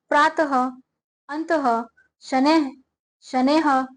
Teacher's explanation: विसर्ग का उच्चारण हल्के ह के समान होता है। यह हिंदी वर्णमाला के अह वर्ण का ही रूप है।